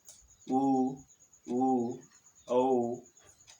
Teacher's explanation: ओठ गोलाकार हो जाते हैं उस स्थिति में उच्चारित स्वरों को वृत्ताकार स्वर कहा जाता है या वृत्ताकार स्वर कहते हैं।